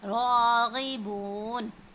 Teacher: रब्बिना, रा पर ज़बर है, जब भी रा पर ज़बर होगी उसके ऊपर जो भी हरकत होगी उसको हम पुर पढ़ेंगे। राग़िबून, रा पर खड़ी ज़बर है, इसको हमने थोड़ा सा खींचना है